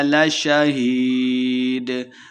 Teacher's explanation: ہی یہ مدہ ہے، 2 حرکات لمبا کریں گے اور آخر پہ وقف کریں گے تو صرف دال کی آواز آئے گی